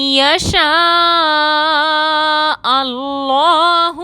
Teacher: یشاء اللہ میں نون ساکن کے بعد حروف یومن میں سے یا آ رہا ہے، مشدد کر کے غنہ کے ساتھ ادا کریں گے۔ اللہ میں اللہ سے پہلے حمزہ پر زبر ہے، اللہ کا لام موٹا پڑھیں گے